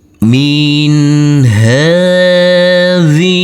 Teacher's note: Maka huruf nunnya kita baca dengan terang atau jelas.